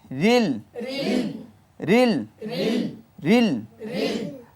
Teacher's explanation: লামের মধ্যে মোতাওয়াসসিত সিফাত আওয়াজ জারি হবে না পুরোপুরি বন্ধ হবে না